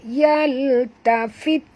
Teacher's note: huruf ta ni bila mati bunyikan hamasnya